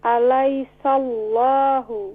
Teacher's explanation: The hamza in the bottom of the throat.